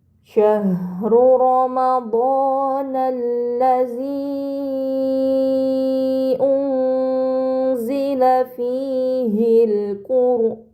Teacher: Pada kata ramadanalladzi unzila terdapat mad bertemu hamzah bukan dalam satu kata ini dinamakan mad munfasil maka harus dibaca panjang selama empat atau lima harakat